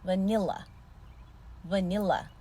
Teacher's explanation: bu kelime üç heceden oluşuyor vurgu ikinci hecede ilk hecede ve son hecede şva